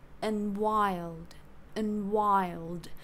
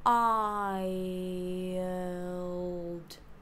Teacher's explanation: Like, technically there's no schwa, but because we're going from I to the dark L, which is at the back, or the back of the tongue is raised. So we have to make this movement from the front to the back, and on the way, to make it kind of easier, we pick up the schwa from the center of the mouth.